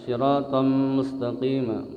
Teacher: Idgham bi gunnah. Tanwin ketemu mim.